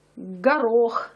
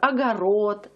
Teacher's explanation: в Москве она произносится твёрдо это взрывное г